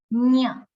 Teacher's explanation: તાલુ જે છે એની સહાયથી પણ સાથે સાથે એ અનુનાસિક છે. અનુનાસિક છે અર્થાત એનું ઉચ્ચારણ નાકમાંથી થવું જોઈએ, નાકની સહાયથી થવું જોઈએ. એટલે એનું ઉચ્ચારણ થાય ન્ય.